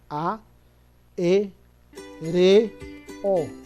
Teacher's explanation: Tiene 4 sílabas y todas son vocales abiertas. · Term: hiatos